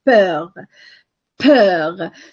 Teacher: So the vowel you have in peur is the one you have in 11. This is a front vowel, but which is rounded.